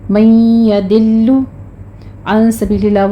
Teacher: لام کو آپ نے موٹا نہیں کرنا، لام کو باریک رکھنا ہے